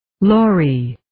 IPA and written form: 'lɔri (Laurie)